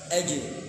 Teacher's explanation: Bertemunya antar lidah tengah dengan apa? Langit-langit bagian atas. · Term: qalqalah